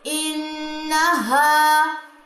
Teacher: अलिफ से पहले ज़बर, इसे भी 2 काउंट्स लंबा करेंगे। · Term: अलिफ मद